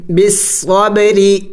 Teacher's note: تو یہاں پہ را کو باریک پڑھیں گے